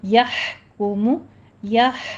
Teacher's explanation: ہا وسط حلق سے نکالیے، باریک سانس کی آواز آئے گی